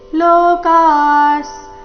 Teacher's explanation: ವಿಸರ್ಗದ ಉಚ್ಚಾರಣೆ ಅರ್ಧ ಸ ರೀತಿ